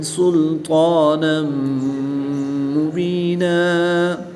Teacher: 2 زبر کی تنوین کو وقف کی حالت میں الف مدہ سے تبدیل کر کے پڑھیں گے · 2 زبر کی تنوین کے بعد میم حروف معلوم میں سے ہے تو یہاں پر ادغام مع الغنہ ہوگا، غنہ کر کے پڑھیں گے۔